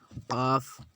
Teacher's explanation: جڑ زبان تالو سے مل کر قاف ادا ہوتا ہے۔